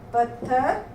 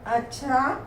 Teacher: इनके संयोग से पहले आने वाला व्यंजन अल्प प्राण होता है